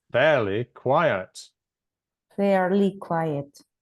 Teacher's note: the stress is on the first syllable in each word the main stress